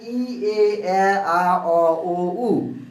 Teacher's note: ই উচ্চারণের সময় জিহ্বা অনেকটা উপরের দিকে যায় এবং এ বলার সময় আরেকটু নিচে নেমে আসে, এ উচ্চারণ করার সময় আরো নেমে আসে, এবং আ উচ্চারণ করার সময় জিহ্বাটা একেবারেই নিচে পড়ে থাকে।